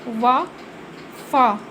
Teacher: ठीक है, दंत्योष्ठ में ये है कि इन व्यंजनों के उच्चारण में ऊपर के दांत और नीचे के होठ का प्रयोग होता है